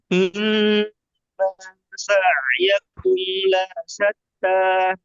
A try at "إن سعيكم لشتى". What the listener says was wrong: লা সাত্তা, লা টান হয়েছে, লা সাত্তা।